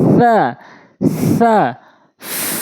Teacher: একদম হালকা করে জিহ্বার আগা দাঁতের আগায়